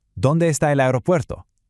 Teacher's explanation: Listen for that soft roll right in the middle of that last word.